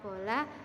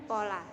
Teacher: dibedakan sebagai bunyi bersuara dan bunyi tak bersuara misalnya bunyi awal pada kata bola dan pola